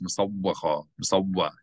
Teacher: You hold the W sound a little bit longer.